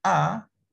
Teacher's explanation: So sebab tu bila saya sebut A, yang mula-mula disebut A itu adalah hamzah, bukan alif lagi. Yang alif ni adalah suara yang memanjang selepas tu.